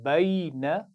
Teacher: پہلے لین کی آواز پڑھی جائے گی اور پھر نون پر زبر، بین، بین، نون کو لمبا نہیں کرنا، اس کا خیال رکھیے، نون پر زبر ہے، بینا نہیں پڑھنا، بین، شاباش۔